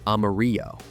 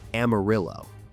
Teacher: They say Amarillo, with a hard double L sound that doesn't exist in the original Spanish